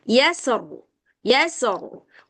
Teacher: Sin muraqokq, ro mufakham. Maksudnya sin itu tipis, rnya ini tebal gitu